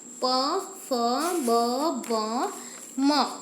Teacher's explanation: આગળનું જોઈએ ઓષ્ટ્ય. જે વર્ગોનું ઉચ્ચારણ કરવા માટે હોઠોનો ઉપયોગ થાય તેને ઓષ્ટ્ય વર્ણો કહેવાય છે. જેમ કે પ વર્ગ પ, ફ, બ, ભ, મ.